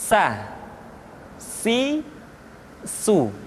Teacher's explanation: ujung lidah di antara dua gigi seri kita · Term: huruf sa